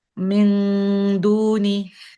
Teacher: Top of the tip of the tongue, and it needs to go very close to the uneven part that's behind the gums. Okay. It needs to go close but not touch, because dal and there was noon.